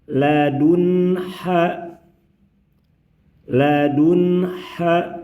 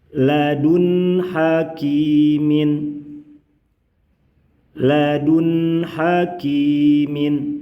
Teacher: Ladun yang kolom kedua sudah dipertemukan dengan huruf ha, dan bunyi yang dihasilkan, bunyi ladun sebelum dipertemukan dengan huruf halqi dan bunyi ladun setelah dipertemukan dengan huruf halqi itu bunyinya sama. Suara n-nya jelas, jangan cepat dipindah, jangan juga terlalu ditahan lama. Contoh ayatnya, ladun hakimin, ladun hakimin. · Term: nun sukun